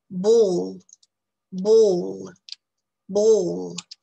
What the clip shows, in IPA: bɔːl